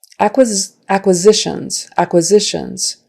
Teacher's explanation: the syllable stress is on the third syllable, the next to the last syllable, which is not surprising because it ends in tion.